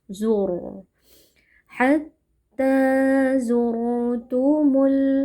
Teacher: Hatta zurtumu zur di sini ada ro sukun yang sebelumnya berharakat dommah. Ro sukun yang sebelumnya berharakat dammah hukumnya adalah tafkhim. Jadi kita baca dengan tebal